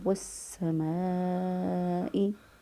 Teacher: اس لام کو ہم نے سین بنا کر سین کا سین میں ادغام کر دیا، پھر ہم نے اس کو پڑھا وَالسَّمَاءِ، الف مدہ، الف سے پہلے والے حرف پر زبر اور اس کے بعد حمزہ آ گیا، اس لیے یہاں پر ہم نے مد کی 2 سے 3 الف کے برابر لمبا کریں گے۔